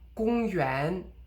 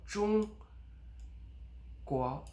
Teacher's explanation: the 国 only rises a little bit, so 中国. So it does rise, but 国, it's very subtle.